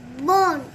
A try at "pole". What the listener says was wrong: P-O-L-E? Pole. It ends with L sound. So P-O-L-E?